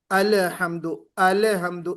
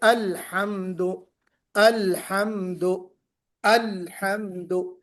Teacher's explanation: آپ نے الحمد میں قلقلہ نہیں کرنا ہے میرے بھائی